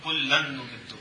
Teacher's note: نون کی مثال کلن نمدو، نون تنوین کے بعد نون ہے، نون کا نون میں ادغام کر دیں گے تو غنے کے ساتھ تو کلن نمدو۔